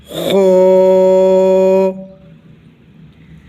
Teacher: گلے کے درمیان سے ہا پڑھا جائے گا، ہا۔ گلے کے اس حصے سے جو منہ کی طرف ہے خو پڑھا جائے گا، اور موٹی آواز کے ساتھ منہ کے اندر آواز کو بھر کے لائیں گے، پھر خا کی ادائیگی درست ہوگی، خو۔